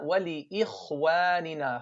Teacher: The kha is heavy because it's sakina, and this is the fourth level of heaviness.